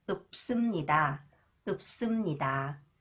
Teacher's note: When 시옷 follows the final consonants 비읍, that is pronounced up sound. Up. The 쌍시옷 is pronounced s.